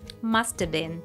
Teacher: Let's break down the connected speech here. The word have is reduced to a schwa sound of, and it links the words must and been together.